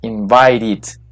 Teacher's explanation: Si usted tiene la palabra invite, termina en T, entonces su terminación que termina en T se va a pronunciar como una ID